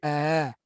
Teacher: Hamzah yang dikelabukan. Yang diringankan bunyi antara hamzah dan mad. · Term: hamzah tashil